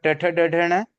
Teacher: जीभ मूर्धा पे टच होती है।